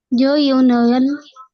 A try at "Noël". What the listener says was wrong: हाँ, इसको नोवेल नहीं पढ़ना, नोएल, नोएल,